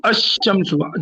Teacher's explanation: یہ تشدید رہتی ہے کیا شمسو میں تشدید رہتا ہے کیا؟ الشمسو, جب الشمسو بولیں گے تو لام کو سیلنٹ کریں گے تو شین کے اوپر تشدید آئے گی